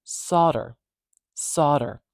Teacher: the stress is at the beginning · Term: primary stress